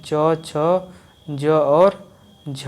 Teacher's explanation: स्पर्श संघर्षी होते हैं च छ ज और झ